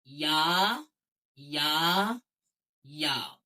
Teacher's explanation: یا کا بالکل وہی مخرج ہے جو کہ آپ اس سے پہلے جیم اور شین میں آپ پڑھ چکے ہیں۔ زبان کا بیچ اور اوپر تالو کا بیچ، یہ دونوں آپس میں جب ملیں گے تب اس سے حرف یا ادا ہوگا